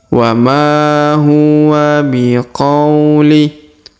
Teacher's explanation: huruf ma kita panjangkan 2 harokat karena di depannya terdapat alif ya